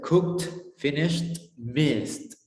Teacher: In regular verbs that end with voiceless consonant, it sounds like t